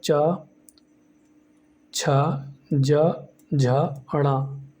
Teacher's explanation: अगर हम बात करते हैं चा वर्ग के बारे में, तो चा वर्ग के अंदर चा, छा, जा, झा, अड़ा ये सभी आते हैं और इनका जो उच्चारण स्थान है वो आपका तालु या तालव्य होता है